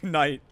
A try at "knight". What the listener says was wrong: You don't pronounce the K.